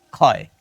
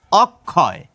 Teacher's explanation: ক্ষীয় যদি শব্দের শুরুতে থাকে তাহলে তার উচ্চারণ হবে খ, কিন্তু শব্দের মধ্যে অথবা শেষে থাকলে সেই ক্ষীয়র উচ্চারণ হয়ে যাবে কয় খ